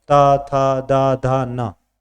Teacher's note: दंत यह दांतों से निकल दांत नहीं होंगे तोय बोल नहीं पाओगे त थ द ध